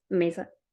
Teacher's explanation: la voyelle E est prononcée comme une voyelle centrale semi-fermée